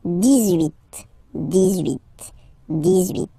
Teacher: you'll make this little link between the two, the liaison